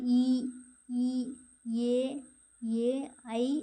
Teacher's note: வாய் திறக்கும் முயற்சியோட நாக்கோட அடி ஓரமானது மேல்வாய் பல்லை பொருந்தும் முயற்சியால் பிறக்கின்றன